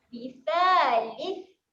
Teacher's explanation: Apabila sa mati ada keluar angin.